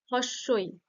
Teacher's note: জীভের অগ্রবাদ দেখো সামনের দিকে এগিয়ে আসছে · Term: সম্মুখ